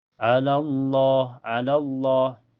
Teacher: Jadi lafaz jalala dibaca tebal karena sebelumnya berharakat fathah. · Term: tafhim